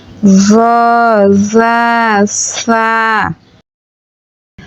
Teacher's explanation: জিহ্বার আগা সামনের উপরের ২ দাঁতের আগার সঙ্গে লাগাইয়া জ জা সা